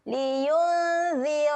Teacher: Dengung sedia nak sebut huruf zal. Huruf selepas nun mati ni, huruf zal. Jadi dengung dia, kita dah siap-siap nak keluarkan lidah.